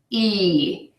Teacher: The big difference in the sounds is that the E, the long sound, your mouth is smiling and your lips are tense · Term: long E